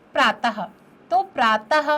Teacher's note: तो विसर्ग का जो उच्चारण होता है वो ह के समान उच्चारित होता है।